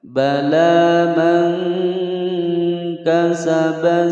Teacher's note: Mangka nun sukun bertemu dengan kaf, hukum bacaan ikhfa, disamarkan kemudian didengungkan.